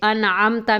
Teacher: تاکہ ہمیں جیسے انعمت میں آپ نے دیکھا ہے نا، ہم نے انعمت نہیں پڑھا، آواز ناک میں نہیں لے کے گئے، کیونکہ نون ساکن کے بعد عین ہے، عین حروف حلقی میں سے ہے، اور نون کو ظاہر کر کے پڑھیں گے، آواز ناک میں نہیں لے کر کے جائیں گے